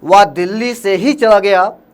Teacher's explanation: आपने विशेष बल कहाँ दिया, ही पे दिया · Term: बलाघात